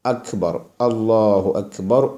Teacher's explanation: അപ്പൊ അറബിയിലെ ആ വരേണ്ടത് തൊണ്ടയുടെ താഴ്ഭാഗത്തുനിന്നാണ്